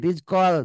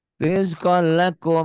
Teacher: Tanwin ini kalau berhadapan tasdid, tanwinnya baca satu, jadi rizkol gitu, jadi baca satu. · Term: idgham bila guna